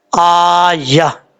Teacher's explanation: جب سٹاپ کریں گے تو تا ہا سے بدل جائے گا